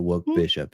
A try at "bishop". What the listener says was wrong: When you pronounce it, I hear bitch up.